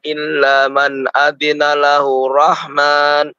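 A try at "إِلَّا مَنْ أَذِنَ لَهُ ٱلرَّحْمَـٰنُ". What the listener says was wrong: man adzina lahur rahman. Ada di situ di tasydid. lahur rahman Dimasukkan ya, dimasukkan.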